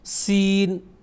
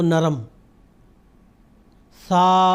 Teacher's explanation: सीन की आवाज में सख्ती पाई जाती है उसकी आवाज के वक्त सख्ती और सीटी सीन और वही सा की जब आवाज निकालनी हो तो नरम